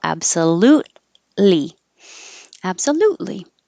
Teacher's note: hold the t because the t and the l are in the same position so you'll just hold it and then release the l